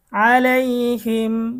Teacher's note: মিম সাকিনের ইজহার গুন্নাহ ছাড়া স্পষ্ট করিয়া পড়িতে হয়